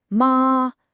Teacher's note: ma was that high flat tone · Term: first tone